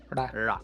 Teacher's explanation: the retroflex, that's when you actually roll your tongue backwards. So you have your tongue at that spot where your palate falls off and turns into the softer part of your mouth.